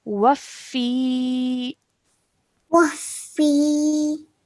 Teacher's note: Okay, and ya mud means we have to stretch out sound out for 2 seconds. So we're going to stretch the fi sound out for 2 seconds.